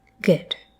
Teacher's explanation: good is often pronounced with a schwa like quality